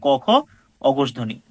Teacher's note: বর্গের এক নাম্বার এবং দুই নাম্বার বর্ণটি হচ্ছে অঘোষ ধ্বনি